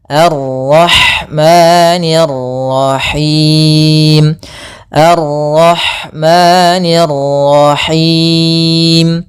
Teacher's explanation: di sini ada ra tafhim pada lafal arroh